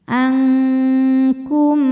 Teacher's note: karena mim sukun menghadapi huruf Sin selain mim dan ba maka mim ini kita bunyikan dengan jelas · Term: izhar syafawi